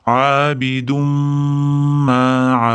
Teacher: Abidumda idg'om kelyapti, ya'ni tanvin mimga yo'l qo'yapti. Bir-biriga kirgizib yuboramiz va mimni tashdidini g'unna qilib ushlab turamiz.